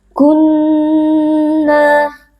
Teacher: Nun yang bertasdid dibaca dengan wajibul ghunah wajib berdengung dengan dengung yang dipanjangkan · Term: wajibul gunnah